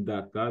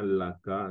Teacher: le ND ou bien D en lingala peut souvent devenir L